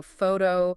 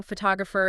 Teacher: photo stresses at the beginning, photographer, it shifts to the second syllable